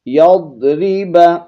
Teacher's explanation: ضاد کو موٹا پڑھیں گے